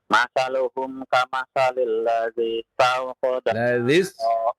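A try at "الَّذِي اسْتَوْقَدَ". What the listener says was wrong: Ladzis tawqada nara, tidak dipanjangkan ya.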